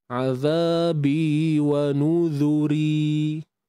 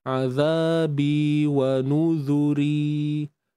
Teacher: kita mengekalkan sifat nipis padanya sebab ra tu baris bawah kan kita tak matikan ro